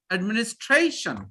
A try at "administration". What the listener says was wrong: Not add. It's administration.